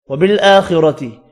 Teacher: وبالآخرۃ کھڑی زبر ہے، حمزہ کے اوپر 1 الف کی مقدار میں کھینچ کر پڑھیں گے